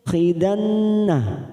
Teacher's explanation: khidanna nun yang bertasdid gunna musaddada